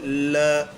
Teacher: जब इस वर्ण का उच्चारण करते हैं ल का तो जीभ के बगल से वायु गुजर जाती है बगल पार्श्विक का मतलब यही होता है पार्श्व यानी बगल साइड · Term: पार्श्विक व्यंजन